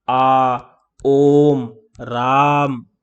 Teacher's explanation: ये बीच में जो आ की मात्रा आ रही है इसमें कंपन देर तक रहता है, समय ज्यादा इसमें लगा रहे हैं हम, जोर इसमें ज्यादा दे रहे हैं, तो इन्हें हम कहते हैं प्लुत स्वर।